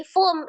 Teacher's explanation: Nun sukun atau tanwin bertemu dengan huruf mim, hukumnya adalah idgham bi ghunnah. Idgham dilebur dari fun menjadi fum, langsung ditasdidkan ke huruf mim disertai dengan dengung